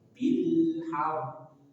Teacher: La. Bil, dan dia punya sifat tawasud atau bainiyah. Maka sedikit alirkan ketika sukun.